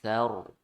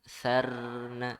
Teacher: ro sukun sebelumnya fathah dibaca tebal ya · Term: tafkhim